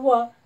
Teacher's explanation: यरल अशी टाका त्यानंतर व व एकटा आहे ते दंतवृष्टीमध्ये म्हणजे व चा उच्चार करताना जिभेच्या दातांना पण स्पर्श होतो आणि ओठांचा पण वापर केला जातो म्हणून त्यांना काय म्हणायचं दातांचाही वापर